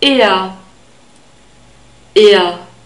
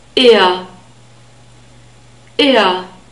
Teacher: E, it's a straight sound, it's not A. E, and we have a central R sound at the end, so slightly more constricted than the normal open R sound.